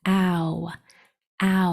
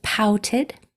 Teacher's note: your mouth starts as an A and then it goes to the O